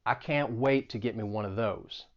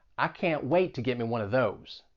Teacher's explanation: I was trying to say it more through my nose. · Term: twang